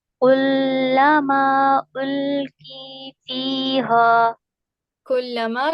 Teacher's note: काफ को बारीक रखिए, कौफ की तरफ नहीं जाएगा।